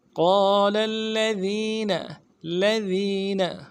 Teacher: کے بعد الف مدہ ہے، ایک الف امداد میں کھینچیں گے، لام کو اگلے لام کے ساتھ ملانا ہے، قال لام کے اوپر زور دیں، تشدید ہے زور دیں گے ، قال الذين لذین لام کو نرم سے پڑھیں گے، ذی